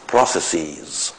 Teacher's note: the pronunciation you often hear is [ˈprəʊsesiːz], which is very peculiar to me anyway